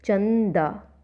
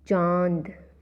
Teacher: जब हम अनुनासिक का उच्चारण करते हैं तो वायु नाक और मुंह दोनों से निकलती है। अनुस्वार में सिर्फ नाक से निकलती है।